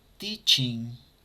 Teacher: no llegamos hasta la G al pronunciarlo. Vamos a llegar únicamente hasta la N.